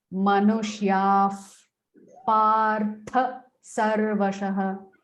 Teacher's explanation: Because the visarga is followed by a pa, you are not going to pronounce the visarga.